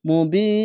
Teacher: আর শেষ অক্ষরে সাকিন দিলে 1 2 3 তিনটি অক্ষর তিন আলিফ টেনে পড়বেন, মাদ্দে আরজি হয়ে যাবে। মুবিন, এভাবে শেষ অক্ষরে সাকিন দিয়ে এভাবে উচ্চারণ হবে।